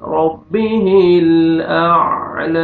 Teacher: double sound آئے گا، وجہ ربہ، را کو مر زبر ہے، را کو موٹا کر کے پڑھیں گے